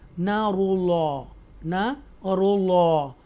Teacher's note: اللہ کے نام کو تفخیم کے ساتھ پڑھیں گے، کیونکہ اس سے پہلے اللہ کے نام سے پہلے پیش ہے، تو یہ تفخیم کے ساتھ پور بولڈ ہم پڑھیں گے، براڈ وائز کے ساتھ، فل ماؤتھ کے ساتھ.